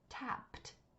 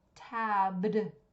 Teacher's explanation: that P sound two puffs of air that's unvoiced